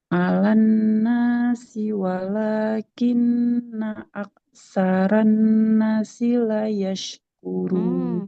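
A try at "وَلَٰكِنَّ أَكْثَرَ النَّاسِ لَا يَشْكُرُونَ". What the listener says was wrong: Aktsaron nasi yang panjang nunnya bukan sinnya. Walakinna aktsaron nasi la yashkurun. La, lamnya panjang. La yashkurun. Untuk baca Al-Qurannya, di sini sedikit panjang pendeknya. Nah, harus lebih teliti lagi sedikit.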